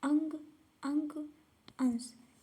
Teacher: अनुस्वार के उच्चारण में नाक से अधिक सांस निकलती है